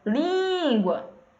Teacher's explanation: Porque se a gente dividir a palavra língua em sílabas, a gente vai ter duas sílabas. E aí a gente vai ver que a penúltima é a tônica. Língua. Então, lim é a tônica.